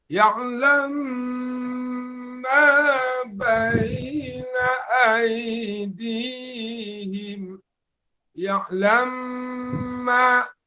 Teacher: Begitu juga dengan dua kata ya'lamu ma baina aydihim wa ma khalfahum. Jadi di situ mim bertemu dengan mim berarti ia menjadi idgham. Jadi dibuatlah idgham seolah-olah dia bertasydid · idgham itu artinya kita satukan antara dua huruf yang sama dalam ayat ini menjadi satu seolah-olah kita membaca satu huruf bertasydid